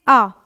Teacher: यह केवल मात्र एक विवृत स्वर है। इसमें मुख विवर पूरा खुलता है।